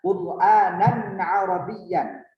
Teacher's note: Tidak boleh dengung di situ. Kenapa tidak boleh dengung? Karena di situ ada hukum bacaan yang izhar, adalah bacaan yang jelas.